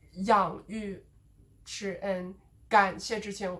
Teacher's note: And then whenever you have like a 4-syllable sort of noun like 养育之恩感谢之情, like the last 3 sort of get de-stressed.